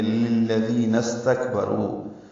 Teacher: استکبروا کا حمزہ عارضی ہے، ملا دیں گے للذین استکبروا. کاف ساکن اور سین ساکن دونوں پہ ہمس ہے، را پر ہے، رو واو مد ہے اور اس کے بعد حمزہ ہے تو پھر چھوٹی مد ہے، یہ مد منفصل.